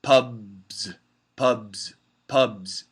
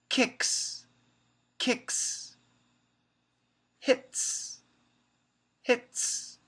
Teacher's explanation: If the final consonant has vibration, like b, b, b, or or ng, then it's a Z sound.